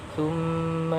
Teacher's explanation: Lafaz tsumma ini idgham bi gunna karena ada huruf mim yang ditasydid dan mimnya harus didengungkan antara 2 sampai 3 harokat · syaqaqna ini qalqalah sughra karena ada qaf sukun yang asli